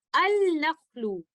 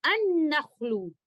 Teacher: हम इसको इस तरह से नहीं पढ़ेंगे अल-नख्लु, क्योंकि यहाँ पर हमने लेटर लाम का इजहार नहीं करना, बल्कि यहाँ पर हमने इसका इदगाम करना है